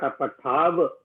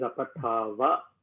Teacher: There is no halanta, so you have to pronounce the full matra.